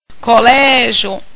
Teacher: Veja que minha sílaba tônica é o Lé. Termina com IO.